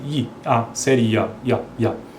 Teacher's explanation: i esse i a semivogal a Glide e o a é a vogal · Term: ditongos crescentes com início no i